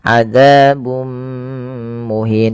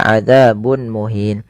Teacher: cara membacanya memasukkan tanwinnya kepada mim dan ditahan adzabum muhin tidak dibaca adzabun muhin. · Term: idgham bighunah